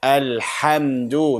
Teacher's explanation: Shouldn't be from the bottom, should be from the middle of the throat